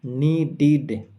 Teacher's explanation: নিডিড, এখানে ড সাউন্ড রয়েছে, ড সাউন্ডের পরে ইডি রয়েছে, আর তাই যেহেতু ড সাউন্ডের পরে ইডি রয়েছে, তাই এর উচ্চারণ হবে নিডিড, ইডির উচ্চারণ ইড এর মতো